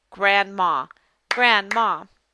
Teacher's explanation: the short a is in the first syllable and the ah is in the second syllable